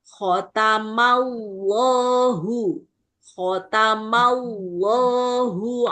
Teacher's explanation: Kamallahu khatama. Ma itu huruf tipis baru masuk tebalnya setelah ketemu lam di lafaz Allah.